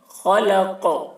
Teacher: قاف میں قلقلہ کرنا ہے